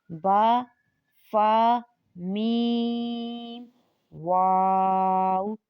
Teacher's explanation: ہونٹوں سے 4 حروف ادا کیے جاتے ہیں